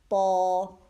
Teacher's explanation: اور خیال رکھنا ہے کہ موٹا جب ہم حرف کوئی کرتے ہیں تو اس کے لیے ہونٹوں کو گول نہیں ہونے دینا، نہ ہی زبان کو آپ نے گول کرنا ہے، ٹھیک ہے. ہونٹ اور زبان سیدھے رہیں گے اور پیچھے سے آپ کی زبان کی جڑ اوپر اٹھے گی